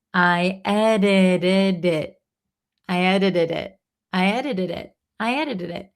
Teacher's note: Usually when we talk fast, we say edit, edit, edited, edited, edited, edited. And then it at the end, the last T kind of disappears. It's like a held T.